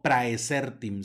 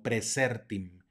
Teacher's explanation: tenemos otro diptongo ae que suena como e